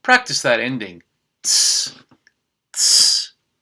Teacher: Make sure to not add any other sounds. It's just that final T sound and an S. Sheets. 2 sheets.